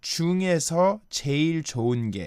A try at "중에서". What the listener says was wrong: Yeah, I think she said the 중에서 part a little bit differently from the standard pronunciation, which became something like 정에서. So 믿음 정에서, it should be 믿음 중에서.